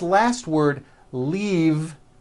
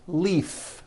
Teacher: this last word leave is very different from the word leaf like from a tree which has an unvoiced F